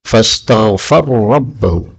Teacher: Ayat 24 lagi pada kalimat fastaghfara rabbahu, ra ketemu ra, maka boleh idgham menjadi fastaghfar rabbahu